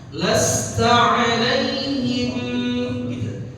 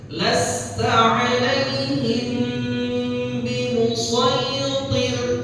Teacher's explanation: Mim sukun ketemu ba, jadi ikhfa syafawi, makanya ditahan.